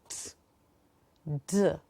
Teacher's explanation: both these sounds are plosives. So every time that you will enunciate these sounds, there will be an expulsion of breath.